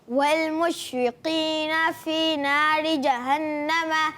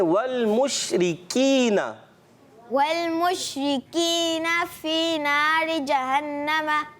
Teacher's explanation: ہاں پتہ چل گیا بھائی، آپ ہی ہیں وہ کہ یہ کاف کو آپ پر کر دیتے ہیں. کاف کو تو ہم نے باریک رکھنا ہے